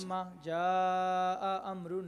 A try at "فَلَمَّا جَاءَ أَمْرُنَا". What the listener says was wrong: نہیں، یہ جو کاٹ رہے ہیں نا، کاٹنا نہیں، دیکھیے فلما جاء،